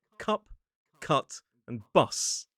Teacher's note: The tip of the tongue is slightly more towards the middle of the mouth. still down towards the bottom but maybe slightly higher up. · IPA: ʌ